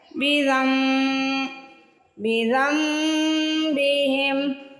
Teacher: یہاں دیکھیے ہمیں چھوٹی سی میم نظر آ رہی ہے، زال کو ڈائریکٹ آپ نے میم سے ملانا ہے اور غنہ کرنا ہے، اس کو کہتے ہیں اقلاب